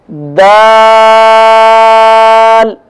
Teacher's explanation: زبان کی نوک جب اوپر کے اگلے دونوں دانتوں کی جڑ والے آدھے حصے سے لگے گی تو دال ادا ہوگا